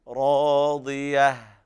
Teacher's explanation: عيشة راضية، وهنا إضغام بغير غنة كامل لوقوع الراء بعد التنوين، والراء وقع بعدها ألف مدية تمد بمقدار حركتين، وهذا أعلى مراتب التفخيم عند الراء